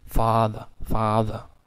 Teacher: therefore it is a low vowel as at the same time the tongue will also move backward while pronouncing the sound so therefore it is a back vowel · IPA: ɑ